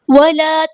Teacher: ولا الف مدہ ہے، 2 کاؤنٹ ہم یہاں پہ لمبا کریں گے